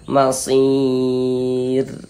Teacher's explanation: kalau ada huruf ra sukun sebelumnya ada huruf ya sukun maka huruf ro dibaca tipis dibaca tarkik